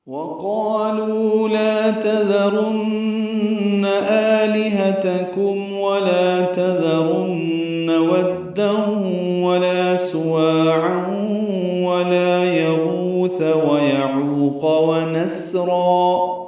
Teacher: وقالوا میں واو ہونٹوں کی نا تمام گلائی سے ادا کریں گے. قاف پر پڑھیں گے الف مدہ ہے، لو واو مدہ ہے، پھر لا الف مدہ ہے، تینوں کو دو دو حرکات لمبا کریں گے.